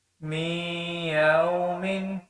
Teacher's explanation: میم کو یا کے ساتھ ملائیں گے، ادغام بھی ہو رہا ہے اور غنہ بھی ہو رہا ہے